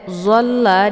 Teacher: ada tasydid di huruf lam, maka cara bacanya zolnya ditekan sedikit langsung dileburkan ke dalam huruf la.